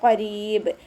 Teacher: ഖാഫ് ഇസ്തിഅലാൻ്റെ ലെറ്ററാണ്, നാവിൻ്റെ ബാക്ക് മുകളിലേക്ക് ഉയർത്തിയിട്ട് തഫ്ഹീം ചെയ്യുക. റ കെസ്റ ആയതുകൊണ്ട് നമ്മൾ രീ എന്നുള്ള സൗണ്ട് കൊടുക്കുക.